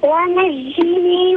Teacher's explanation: حينما نقول ونجني هذه الجيم ليست بجيم شديدة وإنما هي جيم رخوة